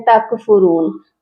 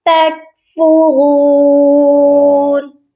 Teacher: اچھا، تا کے ساتھ جو ہے کاف ہے، اکثر لوگ اس کاف پر بھی قلقلہ کرتے ہیں تکفرون، تو یہاں پر کاف پر قلقلہ نہیں ہوگا، کاف ساکن ہے اور اس پر قلقلہ نہیں کیا جائے گا